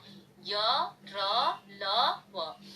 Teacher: जिन वर्णों का उच्चारण करते समय जीभ मुंह के किसी भाग को पूरी तरह स्पर्श नहीं करती, वे अंतस्थ व्यंजन कहलाते हैं।